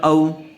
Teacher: زبر والے حرف کے بعد واو ساکن یعنی واو مدہ آئی ہوئی ہے، اس لیے او کو جلد اور نرم آواز سے ادا کریں گے۔